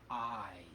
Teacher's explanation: The word is I. It starts with a little glottal stop. But it's mostly that vowel sound.